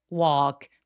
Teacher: walk 걸은 건 혀의 힘을 완전히 빼고 walk 턱이 길어지는게 포인트입니다